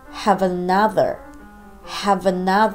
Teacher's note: このあがほとんど聞こえないということになるんです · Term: 曖昧母音